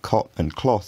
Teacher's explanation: in my accent cop and cloth have the same vowel